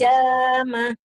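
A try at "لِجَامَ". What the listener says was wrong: Lijama. Lijama. Ibu masih lijamah ya. Lijama. Ada haknya kadang-kadang itu.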